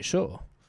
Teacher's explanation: In Argentina, we don't say yo. We say sho. Which is basically the same sound as an sh. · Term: sh sounds